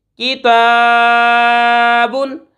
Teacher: किताबुन, किताबुन, काफ ज़ेर की, ता खड़ा ज़बर ता, किताबा दो पेश बुन, किताबुन। ता के ऊपर खड़ा ज़बर है, खींच कर पढ़ेंगे।